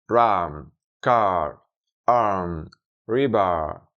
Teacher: Para aprender a pronunciarla, podemos pensar en reproducir el sonido de la letra R en español, pero de un modo suave y no vibrante, por lo que al pronunciarla nunca tocaremos nuestro paladar de arriba con la lengua. De hecho, la lengua se curva hacia arriba y hacia atrás sin tocar el paladar. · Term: American R